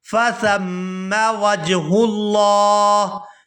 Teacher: یہاں سا کو نرمی کے ساتھ ادا کرتے ہوئے میم مشدد کے ساتھ ملائیں گے اور غنہ کریں گے · یہاں لفظ اللہ کے لام کو پورا ادا کریں گے کیونکہ لفظ اللہ کے لام سے پہلے پیش ہے، اور یہاں پر وقف کریں گے تو وقف کی صورت میں ہا جو ہے یہ ساکن ہو جائے گی۔